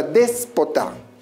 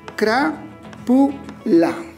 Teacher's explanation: Al encontrarse la mayor fuerza de voz en la antepenúltima sílaba, se constituye en una palabra esdrújula.